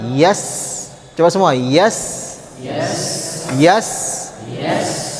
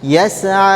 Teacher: Sin itu memiliki sifat yang namanya rakhawah. Sifat rakhawah artinya suaranya panjang. Jadi meskipun huruf sinnya sukun, panjangkan suaranya.